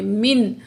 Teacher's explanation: نون ساکن کے بعد حروف حلقی میں سے حمزہ آ رہا ہے، تو یہاں نون کی آواز کو صرف ظاہر کریں گے